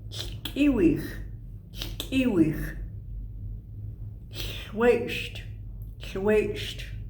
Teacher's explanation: The slurpy L, lateral fricative